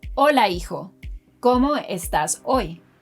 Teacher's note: Pero en Español, la letra h es muda, letter h is silent in Spanish